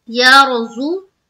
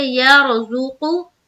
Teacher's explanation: ہے، جیسے یر، زو، زا کے اوپر پیش کی حرکت ہے، پیش کو جلدی پڑھیں تھوڑا بھی نہ کھینچیں، معروف پڑھیں مجہول آواز سے بچے